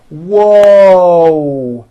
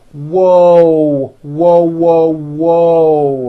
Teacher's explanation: there's also a hidden W sound at the end whoo and my mouth is also very forward and tight